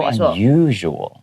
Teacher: you usually make the second you sound longer